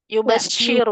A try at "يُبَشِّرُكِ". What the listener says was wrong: Itu shinnya apa namanya? Tafashinya itu ya nggak masuk. Kayak agak asofir jadinya jadinya. Maka tadi jadi kalau dia ke asofir itu shinnya jadi agak ke sin kecil gitu. Di yubasi gitu enggak yubashiruki. Ya, karena kurang disambungin aja. Jadi kalau misalnya kita sinnya, kalau sin kan asofir, kalau shin tafashir.